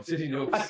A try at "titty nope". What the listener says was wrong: Wait a minute, you just put a T on there. There's not a T.